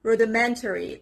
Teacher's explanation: The stress is on the third part, on the third syllable.